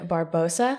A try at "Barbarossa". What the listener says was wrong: Barbarossa. We have one more syllable in there.